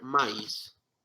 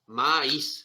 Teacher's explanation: Maíz, se carga la voz en la última sílaba. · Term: palabra aguda